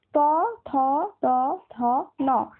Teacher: এখানে দেখো তোমার জিভটা কিন্তু তোমার দাঁতে গিয়ে ঠেকছে, মানে তোমার তো দুটো পাটিতে দাঁত রয়েছে, একটা উপরের পাটি একটা নিচের পাটি। তো ওপরের পাটির যে দাঁতটা, সেই দাঁতের পেছন দিকটাকে ছুঁচ্ছে জিভটা গিয়ে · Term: দন্ত বর্ণ